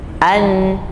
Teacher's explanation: Satu di lidah yang menempel ujung lidah ke langit-langit mulut bagian gusi. Kemudian sambil didengungkan dari hidung. Ya, jadi ada namanya gunnah, ya.